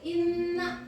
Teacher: Nah, hukum bacaan guna itu adalah apabila terdapat huruf nun tasdid dan mim tasdid, maka dibaca guna. Gunanya berdengung. Contohnya itu inna, dua harakat ya dibacanya.